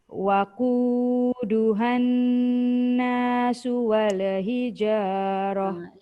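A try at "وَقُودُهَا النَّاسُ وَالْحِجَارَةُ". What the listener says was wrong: Lam jangan heret wala. Waquduhan nasu wal hijarah.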